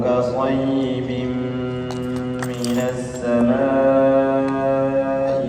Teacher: Jadi tanwinnya dimasukkan ke mim dengan dengung. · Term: Idgham bighunah